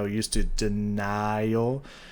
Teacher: it sounds like she holds onto the E and the N when she's playing with those notes instead of the heavy ah sound from the I